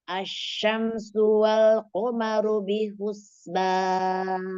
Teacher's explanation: Wal, lamnya diluaskan makhrajnya. Ru ditebalkan tafkhim.